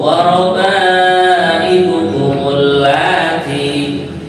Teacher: Kalau digabung dengan kalimat sebelumnya hamzahnya tidak berbunyi, langsung warabaibukumul lati. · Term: hamzah wasol